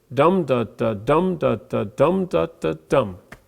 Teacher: dactil three syllables the emphasis is on the first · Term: dactylic